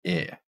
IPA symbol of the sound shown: ɪ